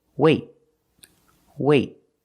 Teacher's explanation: you put your tongue up in the te position but you don't release example wait wait I don't say wait I don't release the · I stop the air. I stop the air with my tongue in the T position.